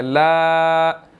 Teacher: لام کے اوپر جو ہے وہ چھوٹی مد ہے لا، اس کو 2 to 3 سیکنڈ جو ہے وہ ہم نے لمبا کرنا ہے